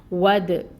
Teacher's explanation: دال جو ہے یہ ساکن ہے، تو دال ساکن ہو تو اس پہ قلقلہ ہوتا ہے، دال کو ہلائیں گے، آواز باؤنس ہوگی دال کی۔